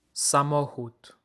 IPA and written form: saˈmɔ.xut (samochód)